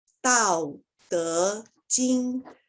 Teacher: So this word 德 is going up. First word is coming down, as you can see in the intonation here.